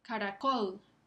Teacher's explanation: Está sobre la última sílaba, col, caracol. Se escucha un poco más fuerte, un poco más, más énfasis o prominencia en cuanto a la prosodia. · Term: acento prosódico